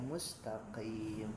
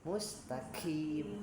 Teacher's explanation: Qofnya juga qof tebal ya mustaqim. Karena kalau tidak hati-hati, nah bisa bergeser ke huruf kaf mustaqim.